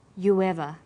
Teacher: You ends with oo, a high back vowel, so it links with linking type 2, the W sound.